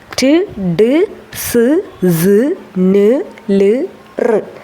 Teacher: നമ്മുടെ ടീത്ത് റിഡ്ജും നാവിന്റെ ഫ്രണ്ട് ഭാഗവും കൂടി ഇടിച്ചുണ്ടാവുന്ന ശബ്ദം